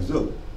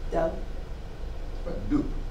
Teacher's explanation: at the end of a word, the B becomes voiceless